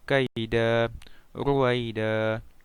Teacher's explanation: Dibaca dengan menghilangkan tanwin dan dipanjangkan 2 harakat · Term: mad iwad